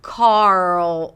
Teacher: Car, and then as you pronounce the R sound, you want to create tension in the back for the dark L